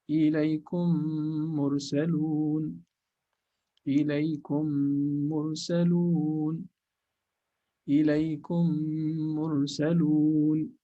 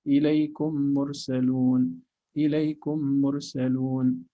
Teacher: Okay, if you want to know if there's idgham, actually you don't open your lips between the first and the second meme. So your lips should be closed.